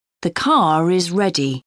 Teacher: when the word is linked to a word beginning with a vowel the r sound reappears